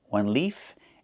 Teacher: One leaf with the F sound with no voice.